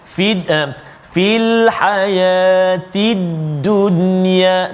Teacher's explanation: nun mati bertemu dengan ya dalam satu kalimah, fil hayatid dunya. Dia tak dengung kat situ. Sebab apa? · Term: izhar mutlaq